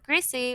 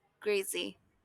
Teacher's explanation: English speakers may pronounce the word greasy with an S sound, whereas others may pronounce it with a Z sound, which may sound like greasy.